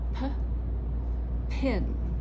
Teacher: the paper will flap when you say the aspirated sound